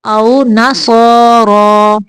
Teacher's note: را کو موٹا پڑھنا ہے، یہ صوت بھی موٹا ہے